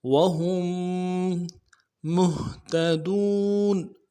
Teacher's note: ہم کی میم کو آگے میم کے ساتھ ملائیں گے چونکہ میم کے اوپر تشدید ہے وهم مهتدون نہیں پڑھیں گے نرمی سے ادا کریں گے مهتدون